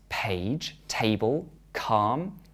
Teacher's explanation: calm we add air to the putter sounds page table calm we can describe these sounds as aspirated